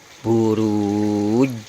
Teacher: Ini panjangnya 4 karena mad arid li sukun. Kemudian diikuti dengan huruf qalqalah jim dengan bunyi e setelah huruf jim tersebut.